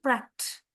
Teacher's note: Pronounced with a final t sound, not the d or ed that is found in other past tense forms.